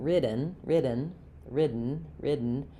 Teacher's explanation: I don't release that d